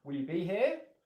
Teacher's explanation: I'm more likely to use an upwards intonation pattern.